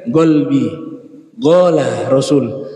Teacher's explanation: Kalau Hadrami itu bainal Qaf wal Kaf, sehingga terdengar golbi, gola Rasul.